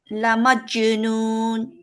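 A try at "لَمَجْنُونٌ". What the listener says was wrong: না না, বেশি স্ট্রং হয়ে যাচ্ছে, মাজো মাজো, ধরেন এই যে।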